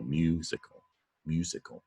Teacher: When you says you say musical. The stress on the first syllable